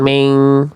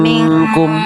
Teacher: Jangan jangan miring ke e vokal i-nya.